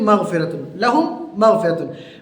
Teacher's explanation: वहाँ पे इदगाम होता है, यानी इदगाम का माना है मिलाना। इदगाम में मीम साकिन लहूम का जो मीम है उसको अगले मीम मगफिरत के मीम में मिलाएंगे तो वहाँ पे गुन्ना करके पढ़ेंगे, उसको बोलते हैं इदगाम शफवी।